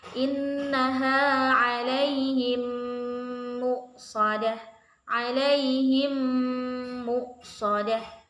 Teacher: apabila mim sukun bertemu huruf mim dibaca sempurna dan disertai gunnah. Berarti kan harus dibaca panjang. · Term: idgham mimi